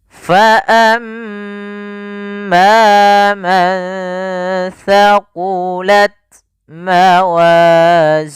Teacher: Di sini ada mim berharokat tasydid, kita baca dengan bacaan gunnah. Caranya adalah menahan suara mimnya.